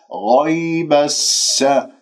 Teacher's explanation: شوفوا السين لازم أنه يكون معاه صفير وجريان النفس والصوت